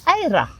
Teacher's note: it's a slightly rolled R